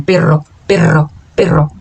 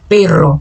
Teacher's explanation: Então, por exemplo, se eu digo perro, que é cachorro, a minha língua, se eu digo perro, ó, com doble, com a W R, a minha língua vibra mais forte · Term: r mútiplo